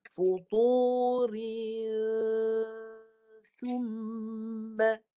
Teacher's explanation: Lepas ri itu baru masuk ke hidung, bahagian tengah hidung dan nipiskan dengungnya.